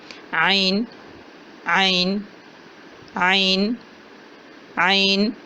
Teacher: حلق کے درمیان سے عین کی ادائیگی ہوگی۔ عین عین قدر نرم اور جھٹکے والی آواز ہے۔